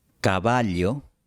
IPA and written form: ka'βa.ʎo (cavallo)